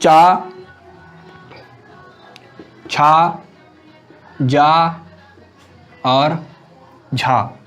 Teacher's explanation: वायु घर्षण के साथ बाहर निकलती है, तो टकराकर या रगड़ते हुए बाहर निकलती है, स्पर्श संघर्षी व्यंजन होते हैं।